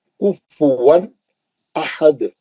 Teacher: روکے تو دال پہ خلخلہ کریں گے، کیونکہ دو پیش ہے، اس کو ہٹا کے ساکن کریں گے تو خلخلے کوہرا ہو جائے گا.